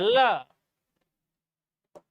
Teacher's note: पार्श्विक मतलब जब जीभ तालु को टच करे और हवा बगल से निकल जाए,